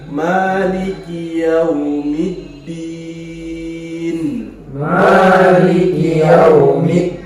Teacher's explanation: Mali, jangan panjang Mali, dua ketukan saja